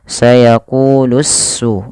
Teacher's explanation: alif dan lamnya harus diidghamkan kepada huruf sin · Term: alif lam syamsiyah